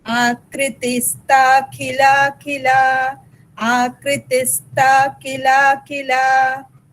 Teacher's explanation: Ta in stha is Mahaprana and khila khila both khas are Mahapranas.